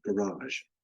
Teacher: there are dialects like some found in Argentina in Uruguay that pronounce this phoneme as a voiced post alveolar fricative like the zhi sound in the English word garage